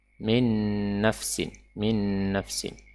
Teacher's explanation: Nun Sakinah nun sukun yang diidghamkan ke dalam Nun berharakat fathah